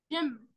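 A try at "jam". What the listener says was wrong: ليه جيم ؟ الاي بتقول طيب اسمعها تاني، الجي بتقول ج مع الاي يبقى جام. الجي ما بتقولش ج، بتقول ج، يبقى ج جام.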